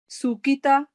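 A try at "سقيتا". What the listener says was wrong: تا نہیں پڑھیں گے, یہ موٹا پڑھا جاتا ہے. قاف پھر دوبارہ سے مفخم پڑھا جاتا ہے موٹا.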